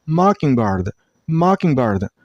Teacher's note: It's not mock, it's ma. And stress on the first syllable, I mean on mock sound